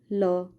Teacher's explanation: पार्श्विक व्यंजन किसे कहते हैं? इसके उच्चारण में वायु जीभ के पास से निकलती है।